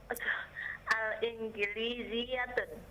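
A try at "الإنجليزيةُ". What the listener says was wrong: Enggak, bukan tun. Al-Ingliziyatu.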